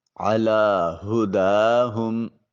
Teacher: ہا میں ہا جو ہے یہ اقصی حلق سے ادا ہوگا۔ دال کے اوپر الف المدیہ الصغیرہ ہے اور پھر ہا کو اقصی حلق سے ادا کریں گے · میم ساکن ہے، اس کے سکون کامل کو ادا کریں